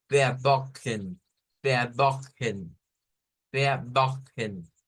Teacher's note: vamos a ver frecuentemente que como que la E se pierde en el sonido. Se nos dice no hay que pronunciarla porque prácticamente está aquí en la N.